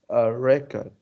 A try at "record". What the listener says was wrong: Yeah, again, stress is on the first record. So like this, you should read it like this. Record.